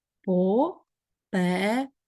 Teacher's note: наголос на другий склад по переду так 4 склади ми маємо з вами оскільки чотири